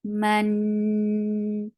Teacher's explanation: This is idgham with gunna. You're keeping the sound in your nose. You're merging sound of tanween into noon.